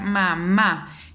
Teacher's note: por ejemplo y si yo me doy cuenta al pronunciar mamá la segunda sílaba es la que recae el acento tónico es donde yo elevo más mi voz